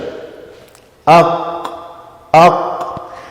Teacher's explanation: Notice that the base of the tongue goes back and touches the soft palate, the uvula or the punching bag. Aq. And that's the makhraj of the qaf.